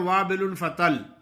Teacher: جو لوگ غلط پڑھتے ہیں وابل فطل، ایک تو تا باریک پڑھ لیتے ہیں، دوسرا لام پہ شد ادا نہیں کرتے